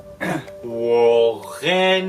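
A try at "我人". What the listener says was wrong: non, wo, ren, Wo, ren, Faut que ça monte. Comme un ascenseur. Faut que ça descende.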